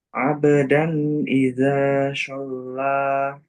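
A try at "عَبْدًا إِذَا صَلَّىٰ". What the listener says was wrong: Nah, shortnya ya, masih short. Ada shin sedikit. Masih sedikit shinnya. Itu shin yang tebal. So, so. short itu sin yang ditebalkan. Sin. Jadi antum bayangannya sin.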